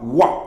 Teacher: 자, 다음에 이제 반모음 오나 반모음 우가 결합된 거 와 같은 경우 오가 먼저 발음되고 반모음 오가 먼저 발음되고 단모음 아가 발음되니까 와 이렇게 되겠죠. 그 다음에 워 같은 경우는 반모음 우가 먼저 발음되고 단모음 어가 발음돼서 워 이런 식으로 해서 상향 이중모음이 된다.